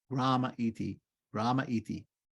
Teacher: the E at the end of grame is turned into a short A. So grame iti becomes Grama iti.